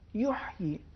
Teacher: آیت نمبر 9 میں ایک لفظ ہے یحیی، اس میں حرف ہا، اس کا عربی میں ایک خاص تلفظ ہے جو وسط حلق سے ادا ہوتا ہے